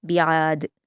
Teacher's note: दाल की तनवीन वक्फ़ करते हुए जब जज़्म में बदलेगी तो यहाँ पर क़लक़ला किया जाएगा